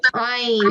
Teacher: It comes from the middle of your throat.